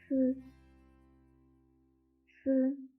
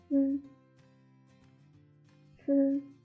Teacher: the tip of the tongue is against the back of the upper incisors to block the airflow. Let the strong airflow break through the tip of the tongue and squeeze out the friction sound from a narrow slit.